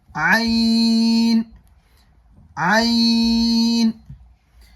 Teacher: عین کا مخرج ہے حلق کا بیچ، یعنی جو مخرج اوپر ہم نے ہا کا پڑھا تھا وہی مخرج عین کا بھی ہے، حلق کا بیچ۔